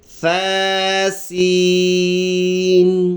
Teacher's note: اگلا لفظ ہے ثا اور یہ سین، نرم حرف اور یہ سیٹی والا سفیریہ جو صفت ہے یہ اس میں ادا ہونا ہے. تو یہ اس میں تھوڑا سا زبان نکال کے سامنے کے دانتوں سے لگا کے یہ بنے گا ثا، اور یہ سین ملا کے پڑھیں گے ثا سین.